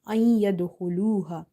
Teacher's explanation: After noon sakin, you see ya, which is from the yarmalun letters. So you have to do idgham with gunna. You have to merge as well as you have to do nasalization.